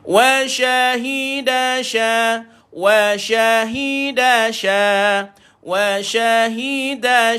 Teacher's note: Pastikan shin ada bunyi tafashi yang kita sebut sebagai berhamburan bunyi.